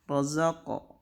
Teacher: Jadi qaf di sini bacanya harus mantulnya ke o, tapi setengah harkat aja. Razaqo, tidak razaq, tidak ke e ya. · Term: qalqalah